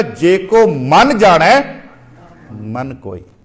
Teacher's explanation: ਪਹਿਲਾਂ ਮਨ ਨੂੰ ਜ਼ੋਰ ਦੇ ਨਾਲ ਆਪਾਂ ਉਚਾਰਨਾ, ਦੂਜੇ ਮਨ ਨੂੰ ਅਸੀਂ ਪੋਲਾ ਜਿਹਾ ਮੂੰਹ ਚੋਂ ਬਾਹਰ ਕੱਢ ਦੇਣਾ, ਕਿਉਂਕਿ ਉਹਨਾਂ ਦੇ ਅਰਥ ਬਦਲ ਗਏ ਆ।